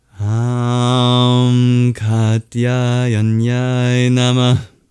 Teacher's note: at the end of Nama, we have what is basically a mini exhale called a visarga, denoted by an H with a dot under it in this transliteration scheme.